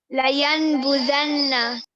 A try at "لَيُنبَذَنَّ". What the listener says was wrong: لَيُنبَذَنَّ لَيُنبَذَنَّ. تھوڑا سا آپ کا غنہ میں کمی ہے. غنہ ایکچولی جو ہوتا ہے وہ نیزل ساؤنڈ کو کہتے ہیں کہ ہم اپنی آواز کو منہ کے بجائے تھوڑا سا ناک میں لے کے جاتے ہیں پھر آواز نکالتے ہیں.